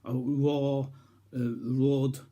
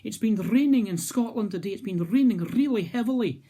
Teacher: notice how that northumberland r sound is very different to the scottish er which is trilled